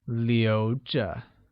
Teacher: Keep translates as 留着, which is pronounced using a mid-rising tone.